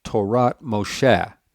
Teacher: So I'm losing the accent. The accent is now going to be on Moshe.